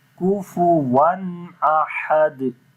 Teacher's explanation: On the waw there is double fatha. After the tanween, like double fatha, the next letter is hamza. We make izhar here. We make the clear sound of noon.